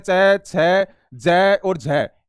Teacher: इन सभी को आपके स्पर्श संघर्षी व्यंजन कहते हैं